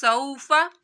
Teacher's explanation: सौफ़ा सीन की सीटी निकालनी है।